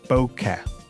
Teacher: It's pronounced bo as in bone and ke as in Kenneth, and you're meant to give equal stress to each syllable